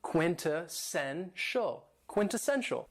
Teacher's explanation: this word has four syllables and the stress is on the third syllable